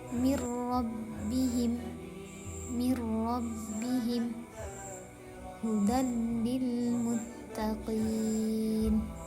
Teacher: Apabila ada nun sukun atau tanwin bertemu dengan huruf lam dan ro, maka cara membacanya, nun sukun atau tanwin itu masuk sempurna ke huruf berikutnya tanpa dengung. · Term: idgham bila gunnah